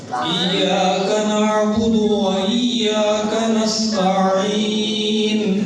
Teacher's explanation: عین اور ہا دو مخرج ہم نے پڑھ لیے، دونوں کا ایک ہی مخرج ہے، کون سا؟ وسط حلق